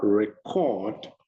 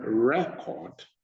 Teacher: So we have for record, you see RE, stressed. And then record, you see CORD, stressed. The same word, but where you put the stress on, give it a different meaning. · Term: word stress